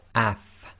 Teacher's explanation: now if you say AF you'll notice that your top teeth front teeth come together with the inner portion of your bottom lips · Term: fa with the sukun